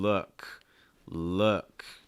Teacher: when you're making that uh sound like in look look just notice again that my lips are much straighter